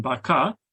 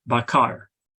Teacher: In Sebutan Johor Riau, this R is silent, as in baka, and this silence is represented by the null symbol that you see on the table. In Sebutan Baku, this R is pronounced, as in bakar. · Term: syllable final R